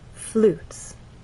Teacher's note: And flutes has only one syllable, so we need to slide down. As we say that one syllable, our voice needs to glide down, and it's very quick. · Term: falling intonation